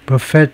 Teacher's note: buffet 뒤쪽에 액센트를 두는 게 더 일반적이다 이거죠. With the stress on the second syllable. The final T being silent. buffet 이거 T는 물론 묵음이 되고요.